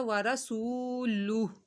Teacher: واو ساکن سے پہلے پیش آ رہا ہے تو واو مدہ ہوگا، ایک الف کے برابر کھینچا جائے گا